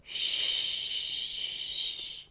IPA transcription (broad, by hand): ʃ